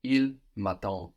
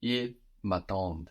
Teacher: So the ENT is silent now, but it of course makes us hear that D that comes before that ENT.